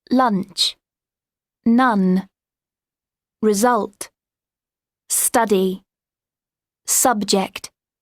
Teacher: Es abierta la boca, casi como una A. No tan abierta, pero casi. · this is a very open sound, like lunch, none, result, study, subject. Es abierta la boca, casi como una A.